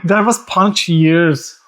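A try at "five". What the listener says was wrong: Punch. You said punch. He was saying punch years, right?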